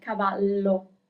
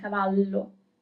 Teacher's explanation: you can also see like the double L, cavallo. It's kind of a longer sound